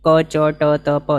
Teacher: નથી ક ચ ટ ત પ સહેજે બોલાઈ જાય એવા છે પ્રાણ પૂરવાની જરૂર નથી મોઢામાંથી વિશેષપણે હવા નીકળે એવી કોઈ જરૂર નથી